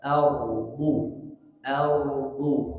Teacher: Huruf ra tebalkan karena dia termasuk tafkhim. Sebelumnya fathah, baca ardu, ardu, tidak ardu, tidak.